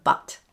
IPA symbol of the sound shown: ʌ